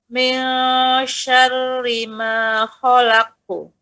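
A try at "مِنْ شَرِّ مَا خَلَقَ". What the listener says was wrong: Nah, pantulannya langsung, jangan ku. Khalaqu. Lepaskan langsung, Bu.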